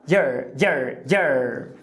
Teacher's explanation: na palavra your, teoricamente é o o ou a ferradura de cavalo, mas aqui reduz para um schwa